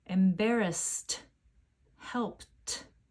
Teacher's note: embarrass and help end with unvoiced sounds S and P my voice is off for those sounds at the end listen to the sound of the e d